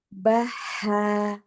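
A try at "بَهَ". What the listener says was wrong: Oke, tapi ini agak lama sedikit, kurangi saja dikit. Baha, baha. Mm-mm. Baha. Lah, dari ba jangan langsung ke ha ya, baha, nggak baha. Baha. Masih taknya ini terlalu banyak hamsnya. Jadi hanya jangan langsung ke fathah.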